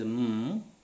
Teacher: we are closing the air with the two lips, and letting the air out through the nasal chamber. Okay, so that's why this is bilabial. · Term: Bilabial, voiced, nasal